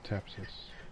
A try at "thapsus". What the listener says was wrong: I think it's thapsus, like TH.